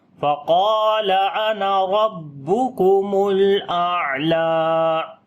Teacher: تھوڑا سٹرونگ کریں گے، لام کے اوپر صفت توسط کریں گے، عین کو گلے کے درمیان والے حصے سے پڑھیں گے اور اس کے اوپر بھی صفت توسط ہوگی ، یعنی آواز کو ہلکا سا کنٹینیو کریں گے اور ہلکی